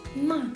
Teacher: the fourth tone is like you are angry and you are saying it quickly